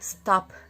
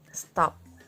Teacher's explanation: Jika disuarakan menjadi stop, ada hembusan napas. Jika kita letakkan tangan di depan mulut, ada hembusan nafas H-nya.